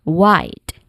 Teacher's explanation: it contains a vowel sound that smoothly glides to another vowel sound. Meaning it just you know contains vowel plus vowel sound. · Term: dip thong sound